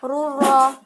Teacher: bacaan idgham bila gunah, di mana dhamma tanwin bertemu dengan huruf ro